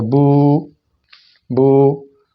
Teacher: پیش کو ذرا لمبا کریں گے، بو، تو دیکھیں اس کے اندر واو کا اضافہ ہو رہا ہے، اور یہ اس کی شکل بن رہی ہے، بو بو۔ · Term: مد